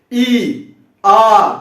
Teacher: ज्यादा समय लग रहा है, छोटे वाले के दुगना समय लग रहा है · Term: दीर्घ